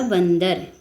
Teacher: न का उच्चारण हो रहा है आधा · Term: अनुस्वार